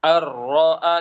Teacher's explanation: Langsung nempel ke huruf lamnya atau huruf ro-nya dengan agak ditinggikan, lalu setelah itu dibaca. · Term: digertak